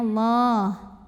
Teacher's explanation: karena lamnya didahului baris fathah maka di panjangnya tebal ya pangkal lidah naikkan bunyinya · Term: tafkhim